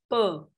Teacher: a p, which is a non-aspirated sound, we take it so much for granted that it's such an easy sound to make.